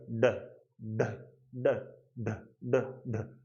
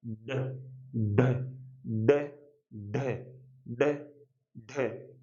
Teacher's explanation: जीवा की जो अगली नोक है वो एक बार वापस जाएगी, ऐसे थोड़ी घूमेगी, घूमने के बाद में ऐसे फेंकेगी ने बाहर। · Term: उच्छिप्त